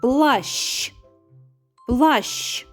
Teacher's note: Одягнені вони у сині костюми, тому що і звук ш, і звук ч - це тверді приголосні. Але вимовляємо ми ш ч, а пишемо буква щ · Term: звукосполучення